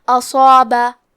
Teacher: صاد حروف التفخیم میں سے ہے تو ہمیں صاد کو بھاری آواز میں پڑھنا ہے کیونکہ اس کے بعد مد الف ہے اور ہم مد الف میں پچھلے والے حرف کا حکم لیتے ہیں تفخیم میں اور ترقیق میں. تو ہمیں صاد کو اور مد الف کو دونوں کو بھاری آواز میں ادا کرنا ہے